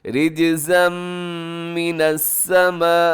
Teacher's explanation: بڑی مد ہے یہاں پر، مد متصل، حروف مدہ اور حمزہ ایک ہی لفظ کے اندر ہے، اور دوسری بات یہ ہے کہ حمزہ جب اس شکل میں ہو، جیسے یہاں سمائی میں نظر آ رہا ہے تو بڑی مد ہوتی ہے، لیکن اگر حمزہ دوسری شکل میں ہو جو الف کی طرح ہوتی ہے تو وہاں چھوٹی مد ہوتی ہے۔